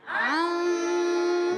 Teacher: اخفا کی معنی ہے چھپانا. نون کو چھپاتے ہیں مگر ایک الف کا غنہ بھی کرتے ہیں. آواز آئے گی عن.